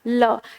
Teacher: हिंदी वर्णमाला में पार्श्विक वर्ण एक ही होता है और वह होता है हमारा ल। यानी जिसके उच्चारण में जीभ हवा को अवरुद्ध करती है और हवा जीभ के पार्श्व से गुजरती है